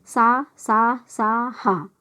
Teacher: जिन व्यंजनों के उच्चारण में वायु मुख से रगड़ खाकर ऊष्मा उत्पन्न करती, ऊष्मा यानी गर्म सांस छोड़ती है, तो ऊष्म व्यंजन होते हैं।